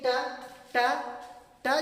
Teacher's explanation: चलिए जैसे हमने एग्जांपल लिया ट, आप बोल करके देखें ट ट ट, जब बोलेंगे तो आपका जीभ जो है रूफ ऑफ टीथ में आकर टकराएगा।